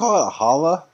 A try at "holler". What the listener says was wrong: Yeah, you got to put that R on there.